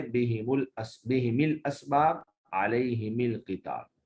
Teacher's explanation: امام ابو عمر بصری جو ہے وہ میم اور ہا دونوں کو کسرہ دے کر پڑھیں گے